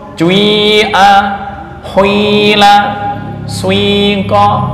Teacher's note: mencampurkan harokat kasroh pada huruf pertama dengan dhammah, dengan cara membaca dhammah terlebih dahulu sepertiga, baru menyempurnakan membaca kasroh 2/3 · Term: ismam